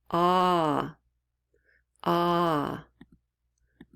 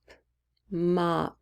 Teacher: And you'll notice with the ah sound, your jaw really drops open.